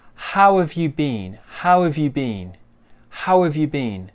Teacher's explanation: So the W joins the A, doesn't it? And we get rid of that H.